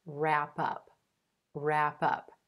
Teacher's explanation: notice that the w at the beginning of this word is totally silent